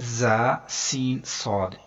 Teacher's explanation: जा सीन सौद, इनको अदा करते हुए सीटी की तरह की तेज आवाज निकलती है